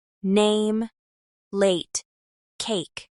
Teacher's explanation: Let's work on the long a vowel as in name, late, and cake. In American English, this sound starts with a and moves slightly toward e